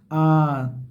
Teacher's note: जैसे आ, आप बोल के देखिए ना, आ, तो आपका मुख द्वार पूरा खुलता है, इसलिए विवृत्त है ना